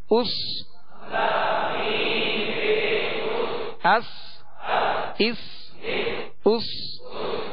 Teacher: سین کو سیٹی کی آواز میں سختی سے ادا کریں گے